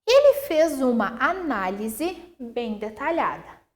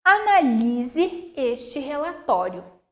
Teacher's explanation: Análise tem acento. Proparoxítono, na antepenúltima sílaba mais forte.